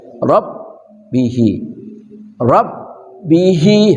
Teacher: ro enggak boleh bergetar lebih dari dua getaran